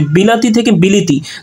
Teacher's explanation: কিন্তু লাটা হয়ে গেছে লি, অর্থাৎ মাঝখানে পরিবর্তন হচ্ছে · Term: মধ্যগত স্বরসংগতি